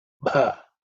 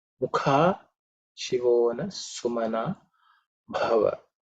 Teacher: Again, bha is the fourth letter in the pa varga, so it has to be aspirated.